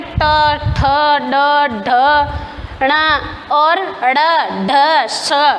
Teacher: इसमें जीभ का आगे का हिस्सा ज़्यादा काम में आता है, इनको मूर्धन्य कहा जाता है। कठोर ध्वनियाँ हैं ये।